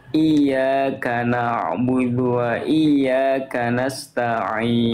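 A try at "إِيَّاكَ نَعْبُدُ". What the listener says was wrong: huruf y ditasdidkan dulu ditekan dulu iyaka nabudu wa i bukan iaka nabudu wa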